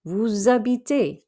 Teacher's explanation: We can pronounce that S at the end of vous because it's followed by an H that is actually silent. So it's like it's followed by a vowel.